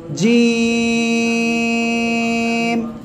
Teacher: জিহ্বার মাঝখান, তার বরাবর উপরে তালুর সঙ্গে লাগাবেন, লাগিয়ে উচ্চারণ করবেন